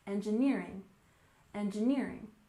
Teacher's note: And finally, we have engineering with the main stress on the third syllable, engineering, engineering.